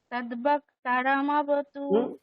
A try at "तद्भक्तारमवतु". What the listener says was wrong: আকার দীর্ঘ। আকারটা তদ্ভক্তারমবতু, আকারটা দীর্ঘ। এখানটায় এই যে দুটো উপরে রয়েছে স্বর, তাহলে অবতু ভক্তারম, এরকম।